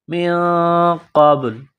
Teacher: من قبل، قاف کو با کے ساتھ ملانا ہے، با ساکن ہے تو با پر قلقلہ کریں گے